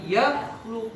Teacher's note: Itu rokhawah, durasi aliran suaranya.